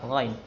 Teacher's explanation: Ghain tebal, isti'ala tebalkan.